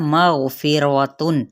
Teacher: गाइन भी पुर है और रा भी यहाँ पे पुर पड़ा जाएगा ज़बर की वजह से।